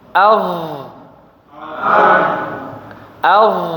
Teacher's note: lidahnya yang bagian pangkal naik ya, jadi suaranya tebal.